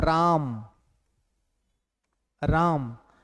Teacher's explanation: आ पर विशेष बल पड़ गया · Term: बलाघात